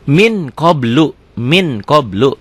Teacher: bila nun mati atau tanwin bertemu dengan kaf atau kof di halaman 20 ini dibacanya engnya banget. Ya, bunyi berubah menjadi eng yang sangat. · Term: ikhfa